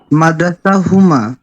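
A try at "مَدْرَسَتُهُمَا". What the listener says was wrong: পুরোটাই বলতে হবে মাদ্রাসাতুহুমা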